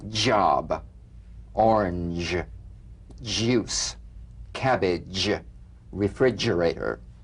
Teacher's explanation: a voiced percussive sensation flowing from the hard palate onto the gum ridge.